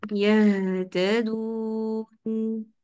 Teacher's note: جب آپ ہا پڑھیں تو اس کے اندر آپ نے جھٹکے نہیں لینے، یہ تدون نہیں، آپ نے کوشش کرنی کہ یہ ہا کی آواز چلتی بھی سنائی دے، یہ یا کے اوپر زبر ہے، منہ نہیں کھولے بہت زیادہ، یا کے لیے زبر کے لیے منہ زیادہ نہ کھولیے، یہتدون، اوکے۔ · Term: چلتی آواز